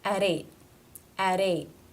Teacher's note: comma there which means we're not going to connect it therefore it is a t at the ends of a word not part of a consonant cluster it's a stop